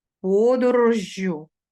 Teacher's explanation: подвійний приголосний між двома голосними і закінчення ю